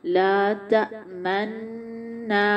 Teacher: इस तरीके को इदगाम मअल इश्माम बोला जाता है। इदगाम यानी पहला नून जो मर्ज हुआ, यानी उसको मर्ज करके पढ़ रहे हैं, लेकिन इश्माम के साथ, यानी उस नून के पेश को हम जाहिर कर रहे हैं।